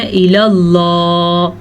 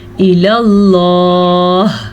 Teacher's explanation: سانس لینا ہے ہم نے تو ہا ساکن ہو جائے گی اور ساکن ہا کی آواز بھی آنی چاہیے